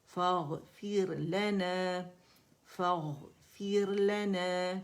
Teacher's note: فا باریک ہے اور غین جو ہے یہ موٹا ہے، تو اس کو موٹائی سے ادا کریں گے، ڈپ بنے گی زبان میں، ٹھیک ہے.